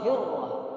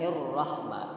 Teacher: ada yang ra-nya begitu tebal, ulama di Syam itu tebal sekali, hirrah. Tapi kalau ulama-ulama Mesir itu agak ringan